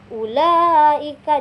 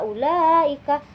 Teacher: Ee mad wajib muttasil ini yaitu mad yang harus dipanjangkan atau ee mad yang bertemu Hamzah dalam satu kata. Panjang bacaannya sekitar 2,5 atau sekitar lima ketukan